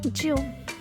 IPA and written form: dʒun (June)